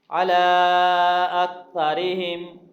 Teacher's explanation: علی کھڑی زبر ہے اور اس کے بعد حمزہ آ گیا، الف مدہ یعنی کہ چھوٹی مد پڑھی جائے گی، کاف کو باریک پڑھیں گے، را کو باریک پڑھیں گے۔